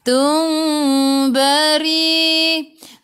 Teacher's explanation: Mim bertemu dengan ba. Ikhfa syafawi dengung dua harakat. Nak rapatkan bibir boleh, jangan tekan. Kalau renggakan bibir seolah-olah ada sehelai kertas di tengah-tengah. · Ri baca dengan nipis. Ra baris bawah.